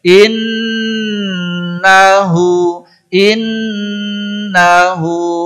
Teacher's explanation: Nun tasdid mim tasdid ghunah Akmal wajib ghunah Akmal ghunah yang paling sempurna tahan tidak tergesa-gesa